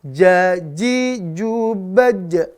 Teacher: maka jim dia tidak berhembus udaranya, maka dia jahar